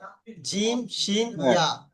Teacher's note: জিভের মাঝখান থেকে, জিভের মাঝখান আর ওই বরাবর উপরে তালুর সঙ্গে লাগিয়ে উচ্চারিত হয়